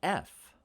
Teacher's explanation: the f is a voiceless labial dental fricative we're using our lips and our teeth and creating some friction there